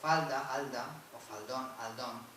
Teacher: Desaparece la F inicial en falda, alda, o faldón, aldón